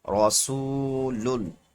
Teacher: را پہ زبر آ گیا، را کو موٹا پڑھیں گے